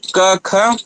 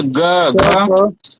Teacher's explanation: क ख केवल उच्चरित हो गया बाहर, लेकिन ग घ आपके कंठ के पास घोष हो रहा है ना, गुंजायमान हो रहा है।